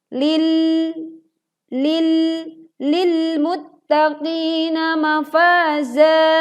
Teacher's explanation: tekan pada huruf lam bersukun lil muttaqina dan hindari memantulkan atau tawalud saat kita membaca lil muttaqina dengan bacaan yang terdengar memantul.